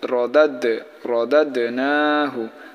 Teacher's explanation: তো এখানে দেখেন দালের জজম, সেই কারণে আমরা এখানে কলকলা করে পড়বো, অর্থাৎ ধাক্কা দিয়ে পড়বো।